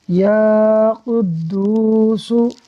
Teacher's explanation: یا الف زبر یا، قاف دال پیش قد، یا قد، یا قد دال واو پیش دو، یا قدو سین پیش سو، یا قدوسو، یا کو الف مدہ کی وجہ سے کھینچا، دال کو واو مدہ کی وجہ سے کھینچا، سین پر حرکت ہے اس لیے اس کو نہیں کھینچا۔